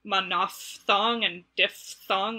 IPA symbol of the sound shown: f